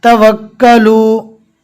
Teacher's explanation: हमने कल वाले सबक में बता दिया था कि जहाँ पर छोटी मद आवे और अगर वहाँ पर हमें वक्फ करना है, ठहरना है, रुकना है, तो हमको वहाँ पर मद नहीं करना है, सिर्फ एक अलिफ के बराबर खींचकर पढ़ेंगे